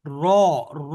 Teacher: আপনি যদি সামনে আয়না থাকে দেখতে পাবেন জিহ্বার মাঝখানটা একটু উঁচু হয়ে গেছে এই র এইটা হলো মোটা উচ্চারণ আর এটাকে পাতলা যদি বলেন তাহলে উচ্চারণটা কিভাবে হবে রা বলে